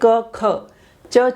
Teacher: अघोष यानी जिनको एक बोलते हुए कोई गूंज उत्पन्न नहीं होती